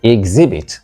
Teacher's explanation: whether you use it as a verb or as a noun, the word is correctly stressed on the second syllable.